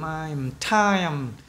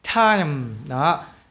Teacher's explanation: cái âm cuối cùng này là âm mũi này, hơi ra từ mũi của chúng ta này